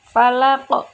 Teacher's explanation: Yang terakhir ada huruf q yang diwaqafkan, maka hukum bacaannya adalah qalqalah kubra. Oleh karenanya dibaca memantul.